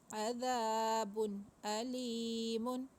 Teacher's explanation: بن کے نون کو واضح پڑھیں گے اور جلدی پڑھیں گے اور لمبا بھی نہیں کریں گے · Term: اظہار